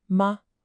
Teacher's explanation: Notice there's no tone mark there. That's the neutral tone. It's just short and light.